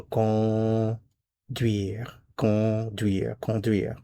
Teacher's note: There is no n sound. It's con. This is a nasal vowel.